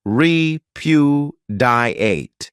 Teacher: this verb has four syllables and the stress is on that second syllable